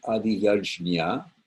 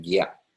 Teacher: Sometimes some people will pronounce it Adiyajnya, a J, normal J sound, but usually the J before an N with a tilde over it, which is pronounced nya, with a little twirl on it, turns into a harder G-ish sound. So it sounds more like gya.